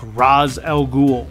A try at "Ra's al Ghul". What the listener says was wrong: Father's name was pronounced Ra'sh, not Ra's. A common mistake.